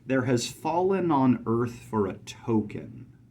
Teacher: at the beginning we have unstressed unstressed stressed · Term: anapestic rhythmic pattern